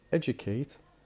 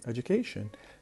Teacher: the stress will move from the beginning to the third syllable, to the syllable that comes before the end, the penultimate syllable, or what we call in Arabic المقطع ما قبل الأخير.